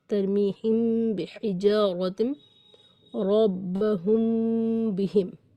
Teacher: میم ساکن کے بعد با آئے، میم ساکن کے بعد با آئے تو میم ساکن کا اخفا ہوگا، یعنی میم ساکن کو چھپائیں گے، با کے مخرج سے پڑھیں گے ملا کر اور کچھ غنّے کے ساتھ